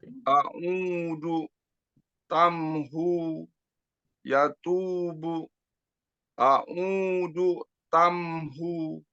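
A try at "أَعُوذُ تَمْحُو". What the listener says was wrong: Nah, jadi du ke tamnya masih belum nyambung. A'udu tamhu.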